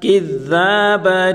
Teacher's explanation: کاف کو ذال کے ساتھ ملا کر پڑھیں گے اور ذال کو نرمی کے ساتھ پڑھیں گے۔ ذال الف زبر دا، الف مدہ ہے، کذابا، آخری حرف پر دو زبر کی تنوین ہے تو وقوع میں ایک زبر اور ایک الف پر کے پڑھیں گے۔